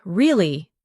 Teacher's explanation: when you ask a question like, Really? your voice goes up slightly at the end. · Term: intonation